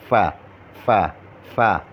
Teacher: مخرج نمبر 15 فا کا ہے. ثنایا علیا کے کنارے اور نچلے ہونٹ کے اندرونی حصے کے ملنے سے ادا ہوتا ہے